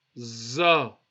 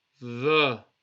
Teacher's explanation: you can feel a bit of hardness, heaviness, za. But when you come to the dhal, it's quite soft letter